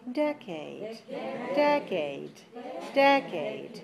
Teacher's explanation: the first one is very good because it's longer and higher than the others